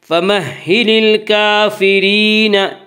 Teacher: یا مدہ وہ یا جو ساکن اس سے پہلے زیر ہو، یا مدہ کو ایک الف کے برابر کھینچ کر پڑھیں گے۔ · فَمَحِّلِ الْكَافِرِینَ، را کے نیچے زیر ہے، را کو باریک پڑھیں گے۔